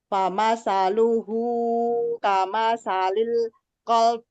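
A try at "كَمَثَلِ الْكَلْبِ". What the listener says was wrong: Bukan kol tapi kal. Kama salil kalb. Ya, samain juga kalb. Ada baknya setengah ketuk ya.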